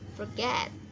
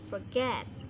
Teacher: penekanannya di suku kata kedua